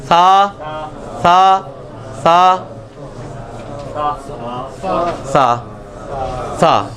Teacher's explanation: ये सा जो है ये इसमें सीटी की आवाज को आपने अवॉइड करना है। सीन में सीटी की आवाज आती है जो ऑलरेडी आपको आती है।